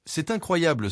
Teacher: c'est incroyable s'accentue sur la syllabe blé à la fin du groupe. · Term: accent tonique